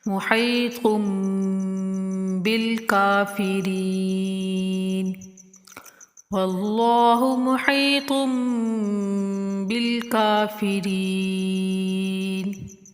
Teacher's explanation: تو کے اوپر چھوٹا میم ہے، میم کے بعد با آئے تو یہ بھی غنہ کیا جاتا ہے